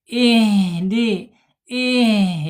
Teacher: Tapi H-nya tidak boleh putus karena hames dia.